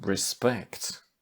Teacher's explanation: Stressed on the second syllable, if it's a noun or a verb.